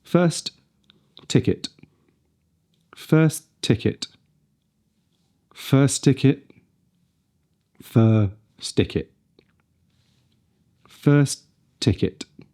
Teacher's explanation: So the end of one word, if it ends with a T and the next word begins with a T, then they can be combined into one sound. But be careful not to blend them too much.